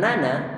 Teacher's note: Jadi durasi antara pengucapan atau vokal digandakan menjadi 2 vokal sehingga menjadi 2 harokat.